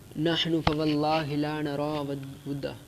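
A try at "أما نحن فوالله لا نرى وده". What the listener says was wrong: اما چھوڑ دیا آپ نے، لیکن ہم لا نرا بدہ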